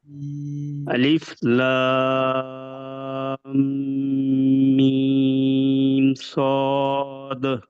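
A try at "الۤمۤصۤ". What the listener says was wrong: जी अब आपने चूंकि लाम और मीम को ज्यादा वक्त दिया तो स्वाद पे आपके सांस बचा नहीं, तो कोशिश कीजिए कि अपने तीनों हुरूफ को बराबर वक्त दें, यानी बराबर। ये बहुत अहम नुक्ता है जो हिदायत नंबर 2 है कि हुरूफ मुक़त्तात की अदायगी में मदों की मिकदार बराबर हो।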